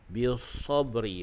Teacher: huruf sad itu dia bersifat dengan safir, yakni berdesir. Dan umpama bunyi sad ini umpama bunyi angsa.